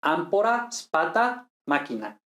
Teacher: la oclusiva correspondiente p t c sin aspirar · Ahora, un romano que no fuera culto, pues diría ámpora, spata, máquina. Es decir, la oclusiva correspondiente PTC, sin aspiración